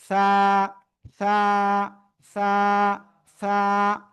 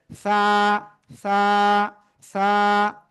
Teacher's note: জিহ্বার আগা, এই দুই দাঁতের আগায় লাগান, লাগিয়ে একটু নরম করে বাতাস বের করবেন। এই যে এইভাবে হাত লাগলে আপনার বাতাস বের হওয়া বোঝা যাবে।